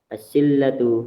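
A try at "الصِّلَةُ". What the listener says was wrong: As-silatu. Kemudian di dalam silah tadi, ingat silah itu nggak pakai tasdid lamnya ya. Nggak ada dia.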